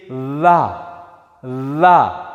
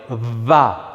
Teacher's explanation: So one common mistake that some speakers who are learning Ndebele make, especially those with exposure to isiShona, would say la, which is a labiodental la, lip to teeth, but in Ndebele it's not labiodental, it's bilabial va